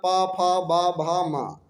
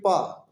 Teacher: तो हमारे ओष्ठ जो है वो उनमें कंपन होता है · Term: होष्ठ